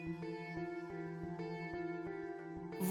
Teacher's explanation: व का उच्चारण दांत, जीभ और ओठों के कुछ योग से होता है, इसलिए इसे दंतोष्ठ्य वर्ण कहते हैं